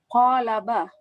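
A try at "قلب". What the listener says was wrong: Qalbun. Ya qaf ya. Jangan kal, tapi kalau qal ya qaf. Qalbun.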